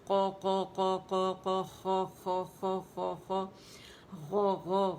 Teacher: تینوں میں زبان کی جڑ اوپر جا کے تالو سے جو ہے نرم تالو سے لگتی ہے. اس میں تو قاف کا تو مخرج ہی یہی ہے کہ جب زبان کی جڑ اٹھے اور نرم تالو سے لگے.